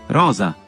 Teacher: el sonido fricativo alveolar sonoro de la S en rosa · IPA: /z/